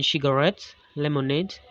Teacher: another set of polysyllabic nouns stressed on the final syllables have been borrowed from french